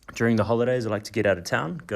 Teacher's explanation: the speaker ends a statement with rising intonation like a yes or no question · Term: high-rising terminal